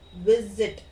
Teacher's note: I stress on the first syllable, and the second syllables we do not stress.